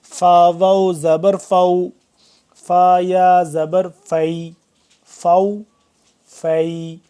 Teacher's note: اوپر والے دو دانت نیچے والے ہونٹوں سے ملیں گے تو فا ادا ہوگا